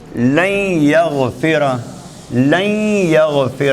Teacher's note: یا سے پہلے نون ساکن تھی تو یہ نون ساکن ختم ہو کے یا بن گئی، تو اب ہم اس کو تری کے ساتھ پڑھیں گے، خیشوم سے تری کے ساتھ، یعنی غنہ کے ساتھ